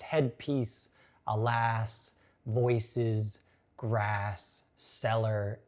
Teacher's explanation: Eliot uses sibilants, the repetition of the S sound in the opening section